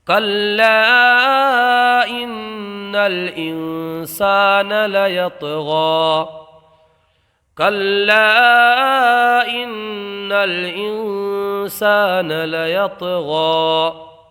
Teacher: یہاں نون میں گنہ ہوگا، اس لیے کہ نون مشدد میم مشدد میں ہمیشہ گنہ ہوتا ہے۔ · یہاں طا کے اندر قلقلہ ہوگا، اس لیے کہ طا حروف قلقلہ میں سے ہے